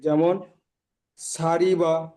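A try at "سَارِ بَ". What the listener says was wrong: সারি বা নই, সারি বা জিহ্বা বা চেপে, সারি বা, শাড়ি নই, সারি, রজের রি, সারি বা, সিন টান হবে না,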